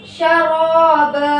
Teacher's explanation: جس کلمے کے آخر میں دو زبر والی تنوین پر وقف ہو تو تنوین کو الف سے بدل کر ایک الف کے برابر کھینچ کر حرف مدہ کی طرح پڑھیں گے. اس کو مد عوض کہتے ہیں.